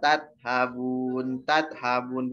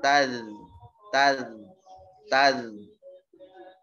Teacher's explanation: huruf zal ujung lidah keluar ada suara mengalir tapi udaranya tidak begitu mengalir dia jahr ya atau udaranya tertahan jadi bukan taz taz atau tat fa'aina tat habun bukan tat tapi taz taz taz alirkan suaranya.